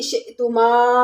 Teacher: شئ میں حمزہ ساکن ہے، جھٹکے کے ساتھ پڑھیں گے